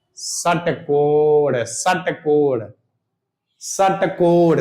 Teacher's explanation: इसका उच्चारण करते समय जीभ मुंह के ऊपरी हिस्से यानी मूर्दा को स्पर्श करती है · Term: मूर्धन स